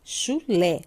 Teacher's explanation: Sílaba tônica no lé